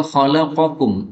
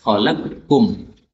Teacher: qaf ketemu dengan kaf maka bisa idgham. Khalaqkum, qafnya hilang ya.